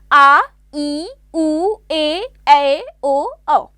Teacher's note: दीर्घ स्वरों का जो उच्चारण होता है वो ह्रस्व स्वरों से 2 गुने समय में होता है